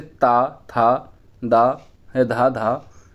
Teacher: जिन व्यंजनों का उच्चारण ऊपर के दांतों पर जीभ लगाने से होता है उसे दंतव्य व्यंजन कहते हैं